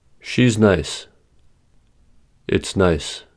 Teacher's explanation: Is and has are reduced to s or z.